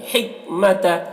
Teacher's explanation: ہا کو حلق سے ادا کریں گے